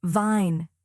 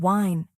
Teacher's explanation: For V, your upper teeth touch your lower lip gently, like vine. For W, your lips round forward, like wine.